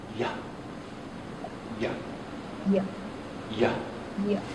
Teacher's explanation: remember that y is a voiced consonant. So there isn't a puff of air tapping on your palm. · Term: y sound